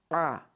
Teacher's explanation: this is not alif a, it's a, from the throat.